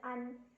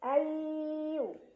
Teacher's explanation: Ada idgham bi gunnah karena ada nun sukun yang bertemu dengan huruf ya. Cara baca nun sukunnya dileburkan atau dimasukkan ke huruf ya sambil berdengung. Jadi artinya sudah jangan baca nunnya lagi, bukan an, tapi ayu ya, tapi masih tetap ada dengung bawaan dari huruf nun.